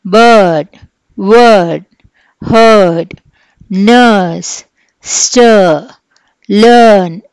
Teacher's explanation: ఆ ఆర్ పూర్తిగా ఉండదు, కానీ కొంచెంగా ఉంటుంది ఆ అన్నమాట. Okay, then the last one is ఊ.